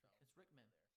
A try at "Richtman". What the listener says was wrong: Richtman. Richtman. Richtman. The T is not silent. No, it's C-H-T. Richtman. Richtman.